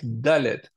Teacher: Dalet, Dalet, c'est dur, c'est une lettre dure puisque elle est dentale